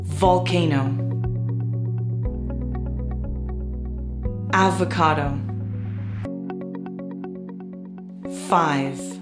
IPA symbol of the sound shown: v